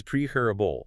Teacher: The stress is entirely on that first syllable.